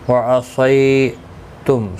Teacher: صی یا لین ہے، تھوڑا نرمی کے ساتھ کھینچ کر ادا کریں گے